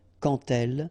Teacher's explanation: when you will have this D, you will phonetically pronounce it like T. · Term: les liaisons